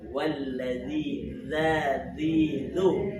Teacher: Zal itu huruf rokhawah. Huruf yang ketika diucap itu suaranya berjalan.